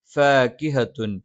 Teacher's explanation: ഫ മേലെ മുൻപല്ലിൻ്റെ താഴ്ഭാഗം താഴെ ചുണ്ടിൻ്റെ പള്ളയിൽ